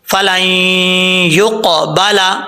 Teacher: نون ساکن کا ادغام ہو رہا ہے، غنہ کر کے پڑھیں گے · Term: ادغام یرملون